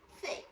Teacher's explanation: The tendency is to replace it with the E vowel. But for the I vowel, the jaw drops more, so the tongue isn't as close to the roof of the mouth.